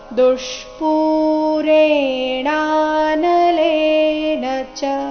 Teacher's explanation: ದುಷ್ಪೂ ಅರ್ಧ ಮೂರ್ಧನ್ಯ ದೋಷ ಮತ್ತೆ ಪೂ ದೀರ್ಘ